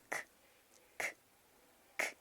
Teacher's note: Hago el ejercicio de tocarme la garganta, k, no vibra.